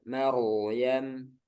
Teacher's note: keadaan yang kedua rnya sukun Nah di sini sukun kemudian sebelumnya fathah ini tebal ya